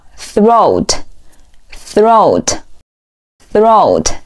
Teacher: 第一个音同样也是咬舌音，舌尖稍微伸出来一点点 ，连起来▁throat,▁throat,▁表示喉咙。好，我们再来往下看，下一个词表示肩膀▁shoulder,▁shoulder,▁shoulder.▁我们来看一下它第一个音标读作▁sh,▁sh.这一嘴巴是往前撅的，同时嗓音不震动